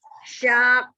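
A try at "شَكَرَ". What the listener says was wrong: Syakaro. Ro-nya juga tidak monyong.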